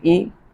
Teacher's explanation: حمزہ زیر ای، حمزہ زیر اے نہیں پڑھیں گے